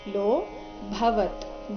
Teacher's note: ಸಶಬ್ದಸ್ ತುಮುಲೋ, ತುಮುಲೋ ತೂಮು ರಸ್ವ ಲೋ ದೀರ್ಘ, ಲೋ ನಂತರ ಅವಗ್ರಹ ಇದ್ದ ಕಾರಣ ಅದನ್ನು ಸ್ವಲ್ಪ ದೀರ್ಘ ಹೇಳಬೇಕು. ಲೋ ಭವತ್, ಭ ಮಹಾಪ್ರಾಣ ರಸ್ವ ಇದೆ, ಕೊನೆಗೆ ಅರ್ಧ ತಕಾರ ಇದೆ